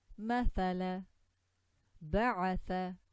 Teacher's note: tha with the tongue out